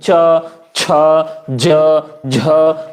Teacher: च, छ, ज, झ मतलब अधिक संघर्ष करना पड़ रहा है, इसलिए इनको संघर्षी व्यंजन भी कहा जाता है। तो झ तक की स्थिति जो है च, छ, ज, झ, केवल इन 4 वर्णों को संघर्षी व्यंजन भी कहा जाता है। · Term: स्पर्श संघर्षी व्यंजन